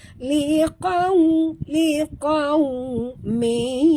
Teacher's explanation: huruf qaf tebal, waw sifatnya lin jadi muncungkan mulut